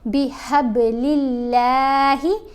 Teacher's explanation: با کے اوپر ہم نے کلکلا کیا، با کی آواز کو ہلا کر پڑھا جائے گا